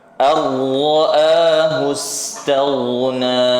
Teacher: Ghain ya tentu saja zamannya juga dipanjangkan karena dia termasuk rikhawah, bukan syiddah dan juga bukan bainiyah.